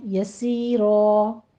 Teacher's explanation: را مفخم پڑھتے ہوئے وقف ابدال کر لیں گے